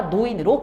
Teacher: 리을이 왔기 때문에 니은으로 바꾼 거죠. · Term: 두음 법칙